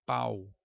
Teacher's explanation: em pau nós temos a vogal e o U semivogal